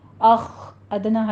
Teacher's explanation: آگے خو کو پر کرنا ہے، حمز کی آواز آنی چاہیے ساتھ میں. اخ ادنا حلق سے ادا کیجیے اس کو.